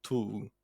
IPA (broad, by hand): tuuʲ